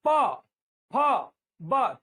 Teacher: होठ से होठ मिलेगा प फ ब तो ये ओष्ठ है